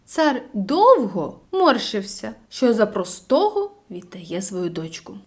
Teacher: потрібно наголосити на словах довго і простого бо вони найглибше передають стан батька